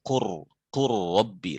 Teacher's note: lam dengan ra sama di ujung lidah, mutajanisin. Maka lam dengan ra itu diidghamkan, wa qur rabbi, lamnya tidak dibaca.